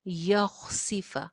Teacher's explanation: خوا موٹی ہے، سین باریک، سین کے نیچے زیر